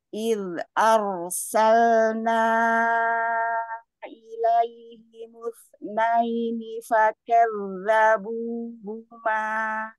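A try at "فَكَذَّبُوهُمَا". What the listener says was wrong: Iya, ha dorong lagi ya, ha karena makhrajnya jauh, hati-hati jangan huma huma itu belum pada tenggorokan belum sampai ke bawah ya, hu huma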